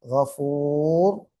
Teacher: கைன் இஸ்திலாவுடைய எழுத்தா இருக்கிறதுனால வல்லினமாக ஓத வேண்டும்